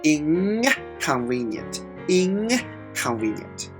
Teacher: K is at the back of our throat so that's why n is also pronounced in the back of our throat to prepare to pronounce the K